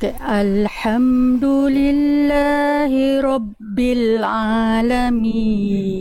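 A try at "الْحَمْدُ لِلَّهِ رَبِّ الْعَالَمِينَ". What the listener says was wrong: Iya, Masya Allah, barakallahu fikum. Bagus, lanjut.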